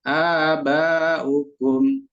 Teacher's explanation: A-nya panjang, 2 harokat atau sekali ayunan.